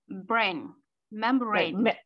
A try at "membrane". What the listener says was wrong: So it's on the second syllable, not membrane, it's membrane.